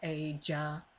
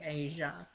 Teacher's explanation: ja is a plosive, so you would say aja, whereas asia would be asia, no pause